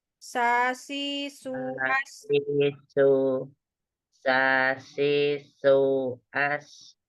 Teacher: Sin tipis itu dia ujung lidah di bawah